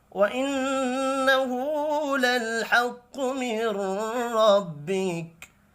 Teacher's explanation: نون مشدد پر غنہ کریں گے، الٹا پیش کو ایک الف کے برابر کھینچ کر پڑھنا ہے۔ قوف حروف مستعلیہ ہے، پر پڑھا جائے گا، را زبر کی وجہ سے پر پڑھیں گے، وف کی صورت میں یہ والا کاف ساکن پڑھا جائے گا۔